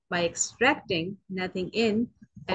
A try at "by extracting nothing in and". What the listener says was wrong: Read that again, but read with the full stop, please. Too quick It's too quick.